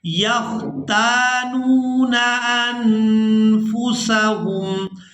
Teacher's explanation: یہاں نون ساکن پر اخفا کریں گے، یعنی نون کی آواز کو ناک میں چھپا کر ادا کریں گے۔